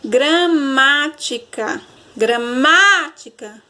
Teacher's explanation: O má, ele é o mais forte, ele tem acento, né? O má, ele carrega aí o acento agudo, então ele é a sílaba mais forte da palavra e ele é a antepenúltima. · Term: proparoxítona